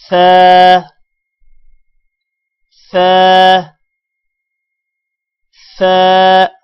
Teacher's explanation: سا پڑھتے ہوئے آپ نے اپنی زبان کو اوپر والے دانت اور نیچے والے دانتوں کے درمیان میں رکھنا ہے